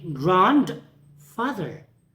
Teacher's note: in the case of the adjective plus noun combination the stress pattern is secondary primary